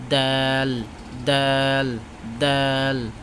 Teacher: জিহ্বার আগা সামনের উপরে দুই দাঁতের গোড়ার সঙ্গে হইতে উচ্চারিত হয় তার মানে দুই দাঁতের গোড়ার সঙ্গে লাগাবে ঠিক আছে দাল দাল